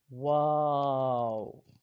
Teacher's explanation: اور چوتھا حرف ہے واو، یعنی دونوں ہونٹوں کی گولائی سے ادا ہوتا ہے